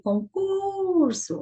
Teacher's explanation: A sílaba mais forte desta palavra foi a penúltima sílaba. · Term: paroxítona